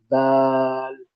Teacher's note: जबान की नोक को सामने के ऊपर के दांतों की जड़ से लगाकर वहीं से निकलेगी दाल